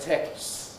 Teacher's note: Texts is another possibility, but texts, as I say, it will often just be a long S